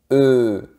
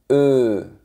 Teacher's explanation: la lettre E sans accent elle est prononcée eux avec la bouche très fermée